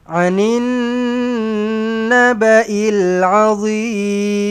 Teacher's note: Anin, nun sabdu dengung 2 harakat.